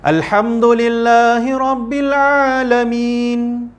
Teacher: Kemudian lamin ma'arid lisukun. Okey, ma'arid lisukun. Panjang bacaan dia, nak pilih 2 boleh, 4 boleh, 6 pun boleh.